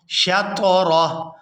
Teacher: وقف کی صورت میں ہا جو ہے یہ ساکن ہو جائے گی، را کو ہا ساکن کے ساتھ ملائیں گے